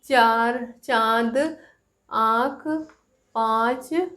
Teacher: प्राण वायु जो है मुख के साथ-साथ नाक से भी निकलती है तो ऐसे वर्णों को हम क्या कहते हैं अनुनासिक कहते हैं